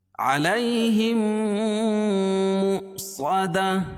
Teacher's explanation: میم ساکن کے بعد میم ہے تو یہاں ادغام شفوی ہوگا، یعنی غنہ کر کے پڑھیں گے